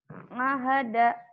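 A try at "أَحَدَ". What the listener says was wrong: Nga, jangan nga. A, ahada. Ahada.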